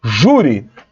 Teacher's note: a sílaba tônica de júri é ju, então o acento tem que estar no U.